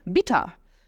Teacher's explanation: percebe que o er no final tem som de a